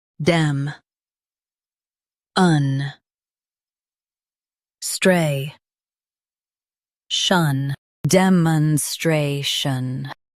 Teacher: Stress stray and keep shun clear.